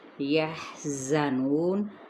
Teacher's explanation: زا سختی کے ساتھ، نو واو مدہ، زا صفیر لیٹر بھی ہے ، نون پہ جب وقف کیا تو وقف بالاسکان۔ والذین کذبوا